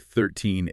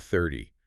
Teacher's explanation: Teen numbers stressed on the second syllable, tens numbers on the first. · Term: stress changes